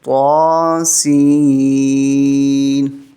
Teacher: طا کو 1 الف کے برابر اور سین کو 5 الف